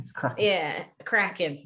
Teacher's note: And we drop the G after cracking.